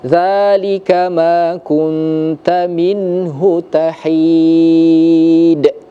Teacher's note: Lagi-lagi di sini ada huruf qalqalah karena di akhir ayat karena kita waqaf, maka dia menjadi qalqalah kubra ya.